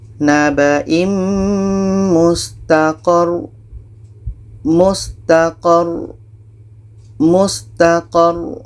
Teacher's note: ada ro yang ada tasydid, maka ini kita tekan, baru matikan ro yang kedua